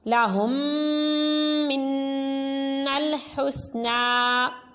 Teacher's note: اس میں دیکھیں میم ساکن کے بعد میم ادغام شفوی تو غنہ کیا، نون مشدد میں بھی غنہ کر کے پڑھا کیونکہ نون کے اوپر تشدید ہے تو نون مشدد ہے.